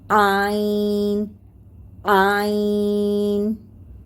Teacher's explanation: आईन हलक के बीच में से आता है